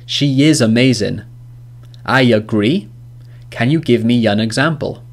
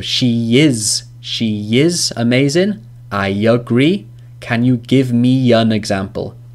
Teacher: we actually have a linking ya sound. A ya sound in between the words which end in a vowel and start with a vowel.